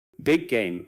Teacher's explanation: Big game often sounds closer to bame with the two G sounds essentially merging into one